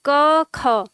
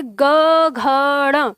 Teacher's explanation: क ख में कंपन न के बराबर है, बिल्कुल न के बराबर, लेकिन ग घ ड़ में कंपन बहुत तीव्र हो जाता है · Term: अघोष